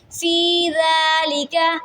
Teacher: یا ساکن سے پہلے زیر ہے، حروف مدہ ہے، ایک الف کے برابر لمبا پڑھیں گے